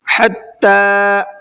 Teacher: ح کو حلق سے نکال کر کے پڑھنا ہے